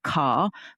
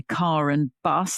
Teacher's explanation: You know, we have linking an intrusive R. I don't say an R at the end of car, but if I say car and bus, then I'm going to say the R. And in that case, you have to put it in.